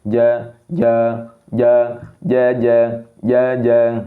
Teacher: Terbukanya ruang antara lidah dan langit-langit mulut ketika pengucapan huruf ja. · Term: sifat infitah